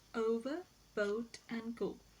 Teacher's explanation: O sound is described as a glide from a central unrounded vowel between half closed and half open position to a centralized back rounded vowel just above the half closed position, and it occurs initially, medially, and finally in the words over, boat, and go.